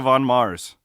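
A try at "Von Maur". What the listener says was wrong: But it's not Von Mauers. It's not plural. It's Von Mauer. You're one of those people that puts an S on every store.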